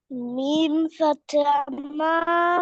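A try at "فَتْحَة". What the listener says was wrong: ফাতিহা বলা যাবে না বাবা। ফাতহা, ফাতহা। হ্যাঁ, মিম ফাতহা মা।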